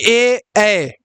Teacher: कंठ तालव्य यानी कंठ और तालु जो दोनों का इस्तेमाल होता है